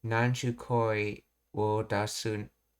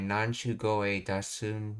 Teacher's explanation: The voicing of K to G often makes the word sound softer, more integrated into the preceding phrase, fitting the dialect's specific intonation patterns.